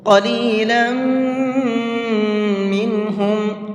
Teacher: فشربوا قلیلا منہم، لم کے اندر غنہ کریں گے، اس لیے کہ یہاں پر یہ تنوین ہے، اور تنوین کے بعد میں میم آ رہا ہے۔ تنوین کے بعد کہیں پر بھی میم آتا ہے تو وہاں پر غنہ کر کے پڑھتے ہیں